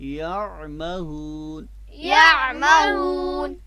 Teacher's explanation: یہاں پہ آپ نے عین حرف کو کہاں سے ادا کرنا ہے؟ وسط حلق سے